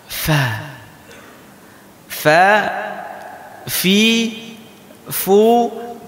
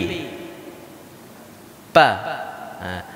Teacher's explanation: huruf fa keluarnya dari ini perut bibir bawah kita mengenai gigi seri atas. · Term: makhraj huruf fa